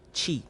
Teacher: At the beginning, the tongue comes up to make contact with the back part of the alveolar ridge to form a stop closure.